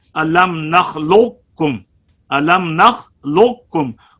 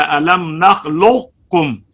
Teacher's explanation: قاف ساکنہ کا ادغام کاف میں ایک جگہ ہے الم نخلقکم، الم نخلقکم. قاف کی صفت استعلاء کو باقی رکھا گیا ہے، قلقلہ بھی ختم کر دیا گیا ہے اور پھر کاف کو پڑھا گیا ہے الم نخلقکم. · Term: ادغام ناقص